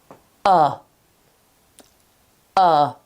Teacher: The first sound is a schwa. Okay? So, the first sound is completely relaxed.